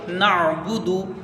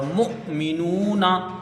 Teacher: ऐन में झटका नहीं हुआ हमजा में झटका होता है इन दोनों हुरूफ में भी आपको ये करना है कि ऐन की जगह हमजा ना हो हमजा की जगह ऐन ना हो बल्कि हमजा को झटके से पढ़ा जाएगा और ऐन को बगैर झटके के पढ़ा जाएगा।